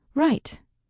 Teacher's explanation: Japanese speakers mix L and R. So light sounds like right.